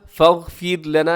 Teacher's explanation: فاغفر لنا اس میں را باریک ہے کیونکہ را سے پہلے زیر ہے ، ذنوبنا وکفر عنا، وکفر اس میں بھی را باریک ہے،